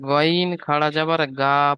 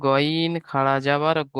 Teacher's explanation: এটা পুর অক্ষর, এই জন্য পড়তে হবে গইন খাড়া যাবার গ, মুখটা গোল হয়ে যাবে।